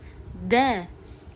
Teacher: D da qalqala sifati bor, ya'ni havo bunga qattiq uriladi.